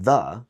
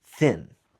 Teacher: There's the th sound that can be voiced as in 'the' or unvoiced as in thin.